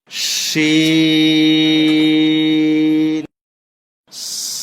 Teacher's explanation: শিন, 4 আলিফ লম্বা হবে, শুরুতে শীষ দেওয়া আওয়াজ হবে